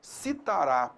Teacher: Ox significa último, tá legal? Então a tonicidade recai sobre a última sílaba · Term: oxitoná, oxítona